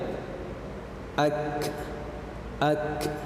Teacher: Nah, perhatikan pada huruf kaf ya, sifat yang melekat pada huruf kaf di sini yaitu ada sifat al-hamas ya, ak ya, ada udara yang mengalir di situ. Ya, jadi pada huruf kaf ketika dia sukun, kita harus mengalirkan udara pada huruf tersebut ya. Ak itu untuk pangkal lidah bagian atas maupun bagian bawah.